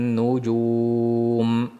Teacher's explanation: Nujum da nunni demak tashdid bo'lgani uchun ushlab turamiz.